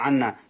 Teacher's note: বললাম ওয়াজিব গুন্না মিমের মধ্যে তাসদি এবং নুনের মধ্যে তাসদিদ দেখুন দুইটা মিম একসাথে হয়ে গেছে দুইটা নুন একসাথে হয়ে গেছে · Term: ওয়াজিব গুন্না